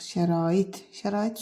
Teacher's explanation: Şərait sözündə vurğu son hecadadır. İkinci hecadakı sait uzun tələffüz edilir.